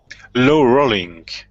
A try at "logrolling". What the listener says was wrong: And sometimes in English they really pronounce that G sound, so it's like log rolling. Log rolling.